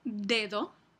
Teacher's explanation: a principio de palabra el fonema de se realiza como d Como oclusiva